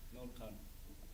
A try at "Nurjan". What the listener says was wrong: Not Khan. Nurjan, you can say. Nurjan.